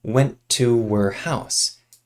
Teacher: house these two T's connect together went to her house and we remove the H from the pronoun her